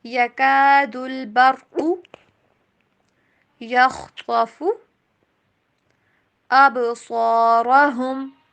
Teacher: یہاں پہ را کو یہاں پہ موٹا پڑھنا ہے، قاف کو بھی موٹا۔